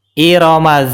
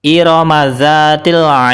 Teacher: atau yang nomor L adalah Dal bacaan yang benar adalah Iram huruf dalalnya dipantulkan karena di akhir kalimat dan diwakafkan bacaan yang salah adalah irtil salah karena huruf dalnya tidak dipantulkan